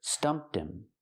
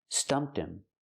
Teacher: Pronounce the T and link to him.